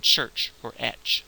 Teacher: If you say t and sh and say them very quickly together, you get what we call the ch sound in English